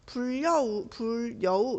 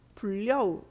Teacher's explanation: 니은 첨가가 일어나서 먼저 불여우 이렇게 되고요. 그 다음에 유음화가 일어나서 불려우 이렇게 돼요.